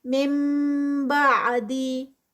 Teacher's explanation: مم پہ جو ہے وہ اقلاب ہے، آگے نون ساکنہ کے بعد با آ رہی ہے تو اقلاب ہوتا ہے